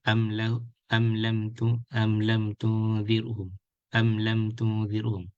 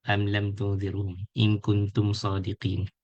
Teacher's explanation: we read it clearly and there is no gunnah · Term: Idhar Shafawi